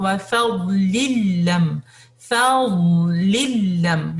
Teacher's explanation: یہاں پہ nasal sound نہیں ہوگا اور نہ ہی آپ نے میم پہ کلکلا کرنا ہے